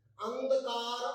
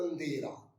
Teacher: अंधकार यानी अनुस्वार का उच्चारण ए के बाद और अंधेरा यानी ए के साथ अनुनासिक का उच्चारण